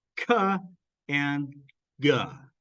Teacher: And then ka and ga, these are velar plosives. The back of your tongue touches your velum, blocks the air, and then it pushes its way out, and we get a little puff.